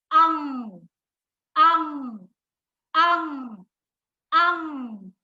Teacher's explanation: अंग बोलते समय नाक से तो हवा निकलती है, ध्वनि आती है, लेकिन मुख जो है वो ध्वनि को अवरोध करता है, रोक लेता है उसको।